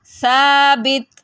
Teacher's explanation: سا زبر الف سا، با زیر بی، سابی، تا دو پیشتن، ثابتن، وقوفاً ثابت۔ یہاں پہ آپ نے تا کو بالکل نہیں ہلانا، کیونکہ تا حرف قلقلہ میں سے نہیں ہے نا، تو یہاں پہ اگر آپ ہلا دیں گے پھر وہ غلط ہو جائے گا۔